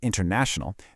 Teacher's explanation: So, in a word like international, the main stress is on na, but you can hear a smaller secondary emphasis on in right at the beginning. It's what gives long words that natural rhythm when we speak. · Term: secondary stress